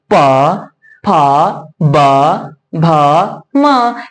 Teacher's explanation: उच्चारण कर रहे हैं ना तो क्या हमारी ओठ यानी कि दोनों ओठ क्या हो रही है आपस में सट रही है एक दूसरे को छू रही है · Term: प वर्ग